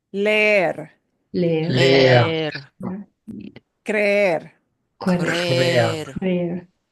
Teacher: I pronounce each E, but because they're next to each other, it'll get kind of dragged out. So, yeah, it'll sound like eh, instead of eh. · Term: drag it out